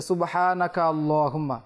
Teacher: আল্লাহুম্মাও পড়ি কোন সমস্যা নাই যদি কেউ মিলিয়ে পড়ে সুবহানাকা আল্লাহুম্মা তাহলে সে কাফ এবং লামকে একসাথে মিলিয়ে নিবে এখানে হামজাটা উচ্চারণ হবে না